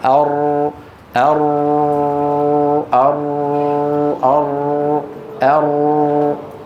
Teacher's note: حرف يخرج من طرف اللسان مع ما يحاذيه من الحنك الأعلى، ويبقى في الوسط فجوة يمر منها الصوت من مجرى ضيق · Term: الراء